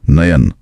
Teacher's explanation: नयन बोलने पर अय की ध्वनि साफ सुनाई दे रही है।